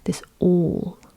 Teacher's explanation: nice, deep, rounded vowel sounds of this long A